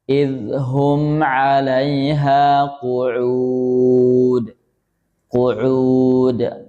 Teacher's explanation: Perhatikan ainnya masuk hidung ya.